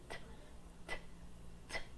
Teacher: consoantes linguodentais, que já é a língua e o dente, como por exemplo a consoante T, que possui o som de t